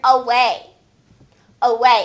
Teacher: And once again, it sounds like it would start with letter U, but it actually is letter A making that schwa sound